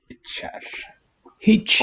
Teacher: Really whistling the devoiced, palatalized final R there